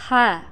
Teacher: huruf ini keluar dari tenggorokan yang terjauh ha kesalahan sering terjadi karena ha sering keluar dari dada ha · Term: huruf h